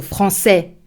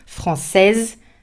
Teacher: Feminine, I would add a final E and pronounce the S.